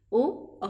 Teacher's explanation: गले से सीधी आवाज निकलेगी और चेंज किसकी होती है इससे, होठों की। ओ औ, गले का सीधा रूप निकलना और चेंज होता है होठों का रूप। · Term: कंठोष्ठीय